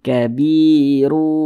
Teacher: disertai dengan ghunah disertai dengan dengungan yang dimasukkan itu apa Apa bunyi tanwin ini dimasukkan ke huruf wau · Bunyi tanwin ini dimasukkan ke huruf waw, dibaca kabiru, kemudian digunnahkan. Jadi suaranya itu kita tahan, kita panjangkan dulu sejenak. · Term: Idam bhunah, idgham bi gunnah